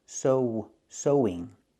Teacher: Link the vowels with the w sound